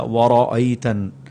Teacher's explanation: یہاں پر را کے اوپر زبر ہے، اسے موٹا کر کے پڑھا جائے گا وَرَأَيْتَن، اور نون پر غنہ کرنا ہے۔